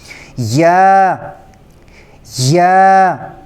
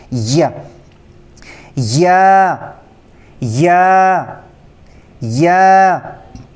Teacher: زبان کا جو بالکل درمیانی حصہ ہے وہ اوپر تالو کی طرف قریب لے جانے سے یہ حرف ادا ہوتا ہے. لیکن جب ہم زبان کا درمیانی حصہ اوپر تالو کے قریب لے جائیں گے تو جو زبان کا درمیانی حصہ اس کو تھوڑا سخت کر لیں گے.